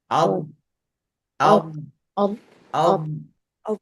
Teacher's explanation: Huruf dad dia bukanlah huruf yang bersifat mempunyai angin.